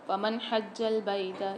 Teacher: فمن حج البیت، یہاں پر نون ساکن کے بعد اظہار ہلکی کے 6 حروفوں میں سے ہا آ رہی ہے، تو یہاں پر ہم غنہ نہیں کریں گے۔ جیم پر مشدد ہے، سختی اور جماؤ کے ساتھ پڑھیں گے